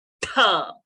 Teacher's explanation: When you aspirate with more pressure outside, you get the Tha sound.